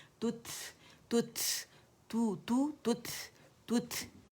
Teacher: जब आप तुत कहते हैं तो शिद्दा की वजह से आवाज़ सख्ती के साथ, कुव्वत के साथ बंद हो जाती है, ठीक है, रुक जाती है। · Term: हम्स